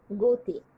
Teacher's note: যেমন গ, আমি অ উচ্চারণ করছি, এটাকেই বলা হচ্ছে আদ্য অ। এই আদ্য অ এর পরে যেহেতু ইকার আছে তাই এটা হয়ে গেছে ও